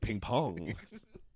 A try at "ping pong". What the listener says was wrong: You're putting emphasis on the wrong syllable, you prick. Fucking say words properly.